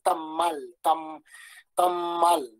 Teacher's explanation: Al momento de soltar la A ya está articulando la M, tamal, ¿sí? Y esa articulación de la M hace que la A anterior se haga nasal